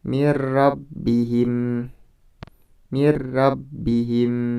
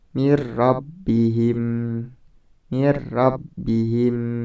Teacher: Jadi di situ nun mati atau nun sukun dimasukkan ke dalam huruf ro tanpa dengan mendengung. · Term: idgham bila gunnah